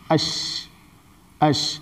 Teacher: لیکن اش میں آواز پھیل جاتی ہے, مخرج میں آواز پھیل جاتی ہے, لیکن اس کی آواز اوپر نہ چڑھنے پاوے, ورنہ شین کیا ہے موٹی ہو جائے گی.